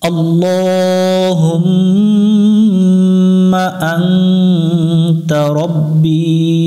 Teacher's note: এখানে এটা আল্লাহ শব্দ, আল্লাহ শব্দের ডান পাশে যদি জবর হয় অথবা পেশ হয় তাহলে আল্লাহ শব্দের লামটাকে মোটা করে পড়তে হয়, এটা জবরে আকার পড়া যায় না।